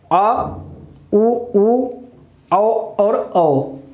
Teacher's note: पश्च स्वर यानी कि जब हमारी जीभ पीछे की तरफ जाती है, यानी कि जीभ का पिछला हिस्सा काम करता है।